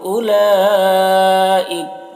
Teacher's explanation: لام میں جو مد ہے مد متصل ہے، اسے 3-4 الف کے برابر کھینچیں گے